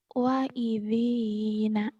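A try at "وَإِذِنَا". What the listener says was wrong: Wanya panjang. Wa'idhina.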